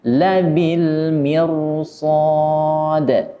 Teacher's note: karena setelah huruf ra ada huruf shad yang memiliki sifat isti'la dan itbaq, maka ra ini dibaca tebal